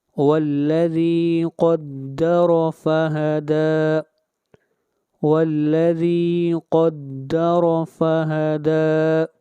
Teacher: قاف کو موٹا پڑھیں گے، قاف حروف مستعلیہ میں سے ہے